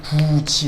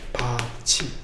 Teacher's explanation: 받침 디귿 티읕 뒤에 모음 이로 시작하는 형식 형태소가 올 때 얘가 지읒 치읒으로 바뀌어서 발음이 나요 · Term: 구개음화